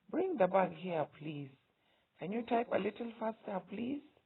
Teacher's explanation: You'll notice that my voice is a bit higher, more strung out. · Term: polite request